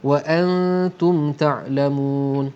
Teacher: Di sini ada nun mati bertemu dengan ta, hukumnya ialah ikhfa hakiki, didengungkan dengan dua harakat dengung. Bunyi dengung tadi bunyi dengung bercampur antara bunyi nun mati dengan bunyi huruf lepasnya ta · Mun ialah mad arid li sukun dua harakat ataupun empat harakat ataupun enam harakat. Kemudian wa aqimus salata wa atuz zakata warka'u ma'ar raki'in.